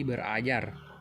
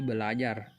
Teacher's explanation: Tetapi karena ada dua bunyi R, maka bunyi R yang pertama diperbedakan atau disimilasikan menjadi bunyi L, sehingga menjadi belajar. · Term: disimilasi fonemis